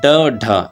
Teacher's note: जिनके उच्चारण में जिब्बा की नोक झटके से नीचे गिरती है ऊपर से नीचे गिरते है वह उत्क्षिप्त यानी फेंका हुआ धवन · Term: उच्चिप्त